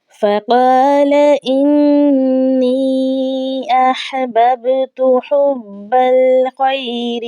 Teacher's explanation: با کے اوپر ہم نے قلقلہ کرنا ہے، یہ حروف قلقلہ میں سے ہے، آواز لوٹتی ہوئی محسوس ہونی چاہیے